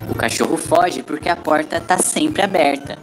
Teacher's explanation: surgiu o r caipira também chamado de R retroflex já e nesse caso a língua faz uma retroflexão indo até o fundo da boca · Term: R retroflexo